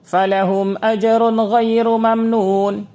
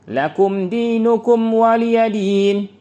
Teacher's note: Dinamakan izhar karena jelasnya pengucapan mim sukun, dan dinamakan syafawi karena keluarnya huruf mim dari dua bibir.